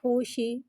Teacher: ہا کو ہوا کے ساتھ ظاہر کر کے پڑھیں گے اور ہا پہ پیش ہے لہٰذا ہونٹوں کی گلائی کے ساتھ ادا کر کے پڑھیں گے